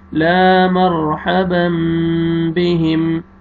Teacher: starting میں الف مد ہے، الف سے پہلے زبر ہے، آپ نے لام کو کھینچنا ہے